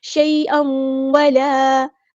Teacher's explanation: نفس شیئا ولا یقبل، تنوین کے بعد واو آیا تو ادغام مع الغنہ ہوگا